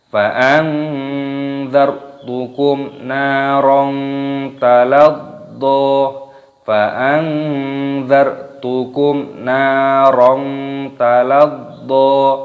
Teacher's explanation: Nun sukun bertemu dengan huruf dal, ini hukumnya dibaca ikhfa, cara membacanya yaitu disamarkan.